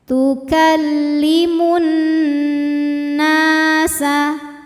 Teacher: tukallimun nunnya gunah musyaddadah karena Nun bertasdid cara membacanya berdengung ya Bunyi n-nya tahan sampai ada suara masuk hidung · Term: gunnah musyaddadah